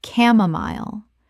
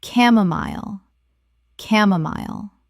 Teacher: The ch makes a k sound and the final syllable rhymes with mile.